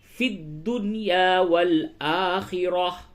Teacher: اس پہ جب وقف کریں گے تو اس تا کو ہا سے بدل دیں گے